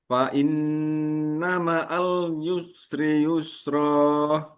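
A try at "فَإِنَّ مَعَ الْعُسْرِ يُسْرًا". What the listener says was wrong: Al usri adalah ain seperti yang sudah kita pelajari. Ada keluar dari tenggorokan usri yusra.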